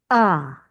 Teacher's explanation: It comes from the very back of the throat. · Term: guttural sound